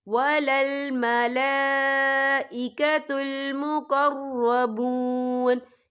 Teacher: یہ مد جو ہے مد متصل ہے، اس کی مقدار 4 حرکت کے برابر ہے، تو ہم اسے 4 حرکت کے برابر کھینچ کے پڑھیں گے